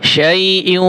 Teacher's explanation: মুখ দুইটা গোল করে গুণ্য করবেন নাকের মধ্যে আওয়াজ নিয়ে।